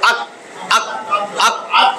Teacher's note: জিহ্বার গোড়ায় একটু সামনে আইসা লাগতেছে তার বরাবর তালুর সাথে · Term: কাফ